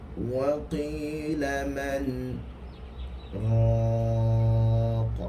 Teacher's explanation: berhenti seketika dengan tidak mengambil nafas. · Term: saktah